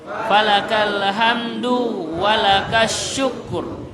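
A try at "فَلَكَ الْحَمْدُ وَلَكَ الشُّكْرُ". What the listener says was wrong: Falakal hamdu walakas syukru. Ini harus dhamma ya, karena kalau kasro ini nama orang. Harus dhamma ya, barakallahu fiik.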